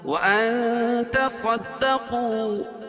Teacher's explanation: صاد کو پر پڑھیں گے، کیوں؟ صاد حروف مستعلیہ میں سے، قو، قاف کو بھی پر پڑھیں گے، اور واو ساکن سے پہلے قاف کے اوپر پیش ہے تو وہ مدہ ہوگا. · یہاں بھی اخفا حقیقی، کیونکہ نون ساکن کے بعد حروف اخفا کے 15 حرفوں میں سے تا ہے